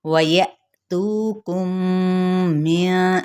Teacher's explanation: مِّن، اب یہاں پہ واو ہونٹوں کے نا تمام گولائی سے، یا حمزہ ساکن ہے تو جھٹکا دیں گے، تو پہ جھٹکا نہیں دیں گے ۔ ہم عموماً کیا کرتے ہیں، یا تو ایسے بول دیتے